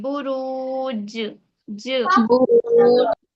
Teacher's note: जीम पर दोहरी आवाज आएगी, जीम पर जज़म आ रही है ना, तो जीम पर कलकला होगा